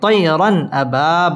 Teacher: তানভিনের বামে হামজা আসছে হামজা ইজহারের হরফ এখানে গুন্না ছাড়া স্পষ্ট করে পড়তে হবে এবং র পুর হবে।